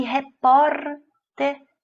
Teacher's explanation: repórter é paroxítona, porque a penúltima sílaba é tônica